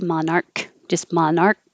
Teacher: you don't have to release the k